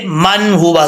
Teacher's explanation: نون ساکن کو ظاہر کر کے پڑھا جائے گا